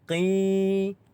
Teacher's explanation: Iaitu yang pertamanya adalah qila, dibaca dengan kadar panjang 2 harakat kerana mad asli huruf ya. Qi, dibaca dengan panjang 2 harakat.